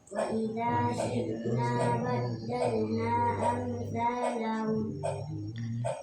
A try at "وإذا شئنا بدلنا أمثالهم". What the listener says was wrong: Badalnya kasih panjang badalnanya. Jaiz munfasil. kasih panjang badalna 4 harokat.